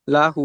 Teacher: ইজরা হার উপরে উল্টা পেশ এসেছে, একে ওয়া মাদ্দার সমতুল্য, তাই উল্টা পেশকে একালি পরিমাণ টান দিয়ে পড়তে হবে।